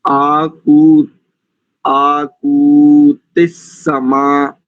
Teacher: इसमें ककार में जो ऊकार है वो तो दीर्घ है, किंतु तकार में जो ईकार है वो ह्रस्व है।